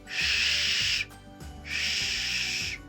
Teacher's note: Згодна, звук вужика звучить «шш, шш». Він твердий, глухий. Пісеньки зовсім не виходить. Звук можна трошки потягнути, але не проспівати.